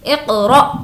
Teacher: حمزہ ساکنہ کے پڑھنے میں جھٹکا ہوتا ہے۔ حمزہ ہے اور اس کے اوپر ساکن ہے، تو اب رول ہو جائے گا کہ حمزہ ساکنہ کے پڑھنے میں جھٹکا ہوتا ہے۔